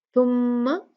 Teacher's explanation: यहाँ पर मीम मुशद्ददा है, 2 काउंट इस पे गुन्ना होगा।